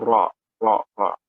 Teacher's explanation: membunyikan huruf dengan lidah bergetar tidak lebih dari 2 getaran. Apabila getarannya sampai 3 kali, maka tercelalah. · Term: takrir